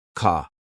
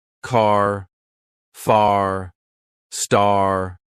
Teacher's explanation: British people say car like ca but Americans they love their r sounds car far star. They stretch the r to make it sound stronger.